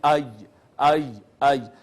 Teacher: اور اسی طرح یا کے لیے بھی زبان اوپر تالو کی جانب اٹھتی ہے، ساتھ ملتی نہیں ہے لیکن اٹھتی ضرور ہے تالو کی جانب